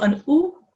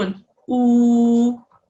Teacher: A waw madda extends a zamma carrying letter from an u to an oo.